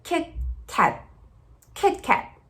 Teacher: especialmente no American English, normalmente o T ele é silencioso. Ele fica Kit Kat, Kit Kat.